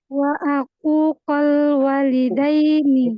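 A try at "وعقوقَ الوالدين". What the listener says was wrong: Ini di domah, uquqol. Ainnya di domah ya, uquqol.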